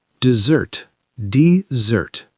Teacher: two syllables stress on the second.